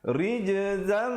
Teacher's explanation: Asalnya zaitan dua di atas bunyi zan. Tapi bila datang mim terus masuk beserta dengung jadi zam dengan kadar panjang 2 harakat. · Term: idgham bi gunnah